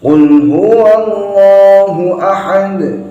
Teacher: Qul huwallahu ahad, bukan huwa. Nah, ini nggak boleh dibaca huwa, karena yang tebal ialah lamnya saja. Lafaz Allah pas pada lamnya, bukan pada wawunya.